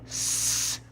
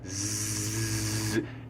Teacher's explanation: S is unvoiced, S, you don't feel any vibration in the vocal cords, and Z is voiced, Z, you feel that vibration in the vocal cords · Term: voiced and unvoiced